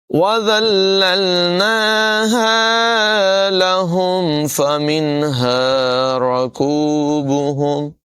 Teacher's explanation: ہے، تو اس کی ادائیگی بھی آپ نے درست کرنی ہے، حلق کے نیچے والے حصے سے ہا ادا ہوتا ہے،